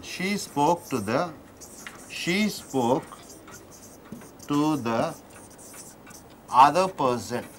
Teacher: So ending with E, starting with E, how is it connected? It is connected with Y.